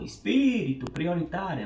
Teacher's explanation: prioritária é a penúltima e espírito é antepenúltimo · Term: proparoxítona